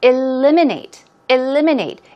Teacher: stress goes right there on the second syllable